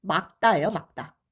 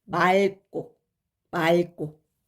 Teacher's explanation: 리을 기억으로 끝나는 단어가 바로 기역 앞에서 기역으로 시작하는 어미 앞에서는 리을로 발음돼요. 원래는 기역으로 발음되잖아요. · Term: 리을 기억의 예외